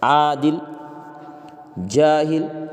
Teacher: الف کم کھینچا جا رہا ہے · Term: الف مقصورہ